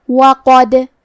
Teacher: کلمت وقد میں حرف الدال پہ جزم ہے تو کیونکہ دال بھی حروف القلقلہ میں سے ہے تو ہم یہ حرف کو ہلاتے ہوئے یہ کلمہ کو پڑھیں گے